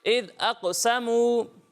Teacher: قاف کو پر پڑھنا ہے، سین کو باریک پڑھنا ہے